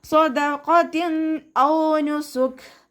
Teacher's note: ഖാഫ് ഇസ്തിഅലാൻ്റെ ലെറ്ററാണ്, നാവിൻ്റെ ബാക്ക് മുകളിലേക്ക് ഉയർത്തിയിട്ട് തഫീം ചെയ്യുക കേട്ടോ. താക്ക് കെസ്ര തെൻവീന് വന്നു, തെൻവീനിന് ശേഷം ഇദ്ഹാറിൻ്റെ ലെറ്ററായിട്ടുള്ള ഹംസ വന്നു.